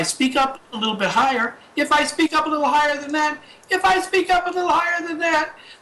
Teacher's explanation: if I speak up a little higher than that, then I'm raising my pitch.